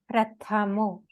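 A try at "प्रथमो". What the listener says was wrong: It is not prathmo, it is prathamo. Every sound should be heard. Prathamo. No, exaggerated. Prathamo.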